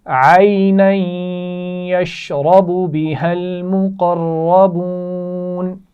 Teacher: بِهَا الْمُقَرَّبُونَ ملا کر پڑھے جا رہے ہیں اور اس میں قاف اور را موٹے پڑھے جائیں گے